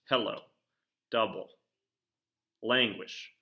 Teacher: So the emphasis, and this can certainly change depending upon how a word is getting used or the way it's trying to be done in a poem, but the emphasis is getting now placed on the first syllable within those words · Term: trochaic